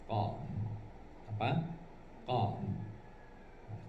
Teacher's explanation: Kalau tanpa diangkat, itu lain juga hurufnya, tapi diangkat pangkal lidah ke langit-langit, nama hurufnya adalah qaf